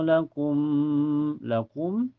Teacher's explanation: Cara bacanya mim pertama dimasukkan ke mim yang kedua dengan sempurna. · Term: idgam mutamasilin